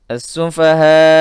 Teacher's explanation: As-sufaha mad wajib muttasil karena hamzah dengan huruf matnya berada pada satu kata. Dibaca 5 sampai 6 harakat.